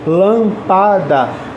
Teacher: eu percebo que o lã é a sílaba mais forte lâmpada eu tenho que colocar acento porque ela é uma proparoxítona